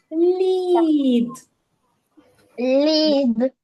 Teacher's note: перший звук приголосний м'який ль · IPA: [лʼ]